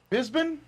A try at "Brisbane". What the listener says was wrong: Brisbane. There's an R in there.